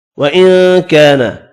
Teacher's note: نون کا اخفا ہوگا، الف مدہ کو ایک الف کی مقدار میں کھینچ کر پڑھیں گے